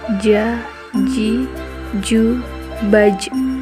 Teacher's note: dilafalkan dengan menyentuhkan nya Tengah lidah ke daerah langit-langit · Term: huruf ja